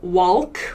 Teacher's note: we don't really pronounce this L, walk.